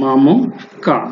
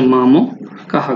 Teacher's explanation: হ আসবে বিসর্গের জন্য, আর ওই আগের অক্ষরের সাথে যে সংক্ষিপ্ত রূপ আছে স্বরবর্ণের তা চলে আসবে এখানে হয়ের সাথে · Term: বিসর্গের উচ্চারণ